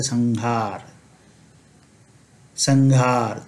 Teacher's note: जब हमारे पास ह उपस्थित रहेगा तब हम अनुस्वार का उच्चारण अंग के समान करेंगे, जैसा कि क वर्ग में कर रहे थे, जैसे संघार, संघार।